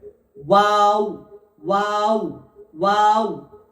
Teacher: ওয়াওটা উচ্চারণ হয় প্রথম মুখটি গোল থাকবে, তারপরে ওই অ উচ্চারণ হওয়ার পরে আবার ওই একই জায়গায় গোলে চলে আসবে। দেখুন, দেখলে বুঝতে পারবেন।